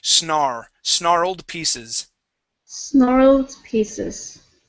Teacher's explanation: we're gonna kind of swallow that R and the L